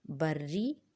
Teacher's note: یہ بری جو ہے اس کے رے پر تشدید ہے، لہٰذا رے کو ہم 2 بار پڑھیں گے۔